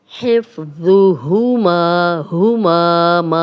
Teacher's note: ما الف مدہ ہے، 2 حرکات لمبا کریں گے